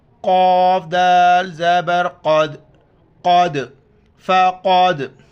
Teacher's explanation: دال کے اوپر کلکلہ کریں گے، یعنی کلکلہ کہتے ہیں آواز کا لوٹ کر واپس آنا، جھٹکے سے پڑھنا لفظ کو